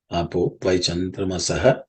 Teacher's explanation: Apaha Y becomes Apo Y because the Visarga becomes O because of Sandhi.